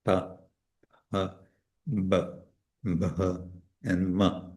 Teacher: all of them are formed with the lips, by closing the lips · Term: labials